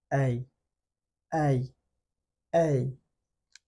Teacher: শুরুতে মুখটা একটু বড় করব, সাউন্ড বাড়ার সাথে সাথে মুখটা ছোট হবে।